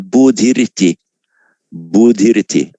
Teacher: Where the following word begins with a vowel or a voiced consonant, the h changes to a r. So bodhi iti becomes bodhiriti.